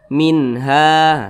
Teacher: hukumnya izhar halqi dibaca jelas tidak berdengung Nah jadi dibaca minha seperti itu pendek saja minha Kemudian ha